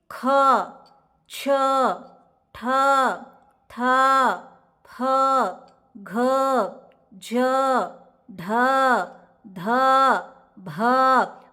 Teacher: ಬಂದು ಮಹಾಪ್ರಾಣಾಕ್ಷರಗಳು ಮಹಾಪ್ರಾಣಾಕ್ಷರಗಳು ಅಂದ್ರೆ ಏನು ಹೆಚ್ಚು ಉಸಿರಿನಿಂದ ಉಚ್ಚರಿಸಲಾಗುವ ಅಕ್ಷರಗಳು ವ್ಯಂಜನಗಳು ಮಹಾಪ್ರಾಣಾಕ್ಷರಗಳು we are pronouncing these letters with more ಬ್ರೀತ್ · Whenever I am pronouncing these letters, I am giving little bit effort. So I am taking little breath to pronounce these letters.